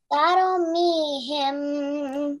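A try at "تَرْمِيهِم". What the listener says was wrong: Okay, do not apply kalkula on rat. Not taro, it's tar.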